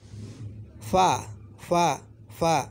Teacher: फ़ा, फ़ा, फ़ा ये होंठों से निकल रहा है, तो होंठ इसके मखरज हैं